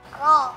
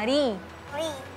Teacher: Jadi kalau ro itu, kalau fathah atau dhamma dia tebal. Tapi kalau kasrah dia tipis.